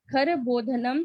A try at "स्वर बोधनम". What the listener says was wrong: स्वर बोधनम, हाँ, खर यहाँ पे क्यों बोलेंगे, स्वर बोधन है।